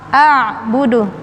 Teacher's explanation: Jadi alif ain, a buka dulu mulut karena mengucapkan makhraj a itu mulut terbuka a, lalu ain masuk di tengah tenggorokan